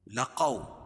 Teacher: قاف کو موٹا پڑھیں گے اور واو ساکن سے پہلے قاف کے اوپر زبر ہے تو واولین ہوگا، اس کو نرم آواز کے ساتھ جلدی پڑھیں گے